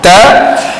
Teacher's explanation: kita lepaskan makhrajnya pada lidah, hujung lidah ta, maka suara dan angin akan serentak keluar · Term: hamas